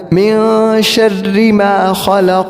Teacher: اور شرری کے اندر رو کو ہم نے باریک کرنا ہے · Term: رو کو باریک